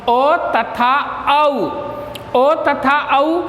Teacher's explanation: ओ तथा औ, ओ तथा औ इन दोनों वर्णों का उच्चारण स्थान कंठ और ओष्ठ होते हैं। जब हम ओ या औ वर्ण का उच्चारण करते हैं तो कंठ से ध्वनि निकलती है और ओष्ठ की आकृति बनती है। तो इनका उच्चारण स्थान कंठ और ओष्ठ हैं और ये भी 12 प्रकार के होते हैं क्योंकि इनका रहस्व नहीं होता है। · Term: कंठोष्टम